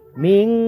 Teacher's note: ইখফা গুন্না হবে নুনে সাকিনের বামে ইখফার হরফ জিম আসছে